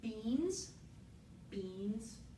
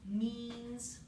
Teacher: child says this as means what the child is doing is taking that voiced bilabial stop and swapping it out for a voiced bilabial nasal stop